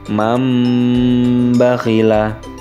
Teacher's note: Yang terakhir mam bakhila. Nun mati berubah menjadi mim mati karena memang di situ bertemu dengan huruf ba.